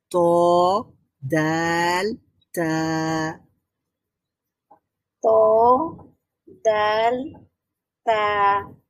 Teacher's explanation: তো দাল তা। হ্যাঁ, তো এই ত, দাল, তা বলার সময় একটু বাতাস বের হবে।